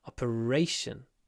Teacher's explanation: make the r long operation because the stress is on the a